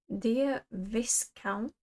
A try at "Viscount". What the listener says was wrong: Viscount. I think it's silent S.